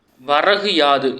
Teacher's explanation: இந்த சொற்களை சேர்த்து விரைவாக ஒலித்து பார்த்தா வரகியாது அப்படின்னு ஒலிக்கும் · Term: குற்றியல் இகரம்